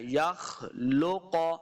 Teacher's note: یخلق، یخ، خواب موٹا پڑھیں گے، یہ نون نہیں ہے، بعض لوگوں کو یہ نون نظر آتا ہے جبکہ یہ نون نہیں ہے، یہ خا ہے، تو خا حروف مستعلیہ سے ہے تو اس کو موٹا پڑھنا ہے